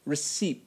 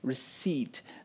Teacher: the p in this word has absolutely no sound so please don't say it